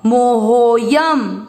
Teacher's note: हो को लंबा खींच लिया ना अवग्रह के कारण,